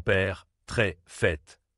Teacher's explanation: c'est un son ouvert, plus long et plus grave.